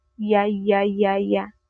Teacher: nararamdaman niyo 'yung panginginig. Ibig sabihin gumagana ang vocal chords kaya may tunog ito. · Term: malapatinig na palatal